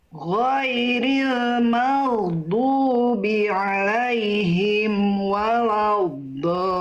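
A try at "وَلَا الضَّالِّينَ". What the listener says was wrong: Nah, lam tasdid jangan ditahan. Huruf yang bertasdid yang ditahan cuman ada berapa huruf Bunda?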